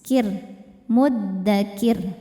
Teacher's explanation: Huruf ro ketika berhenti dibaca secara tarqik. Karena rnya disukunkan dan sebelumnya kasrah maka rnya tipis. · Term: tarqiq